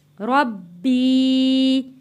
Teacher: با کے اوپر تشدید ہے، با 2 دفعہ پڑھا جائے گا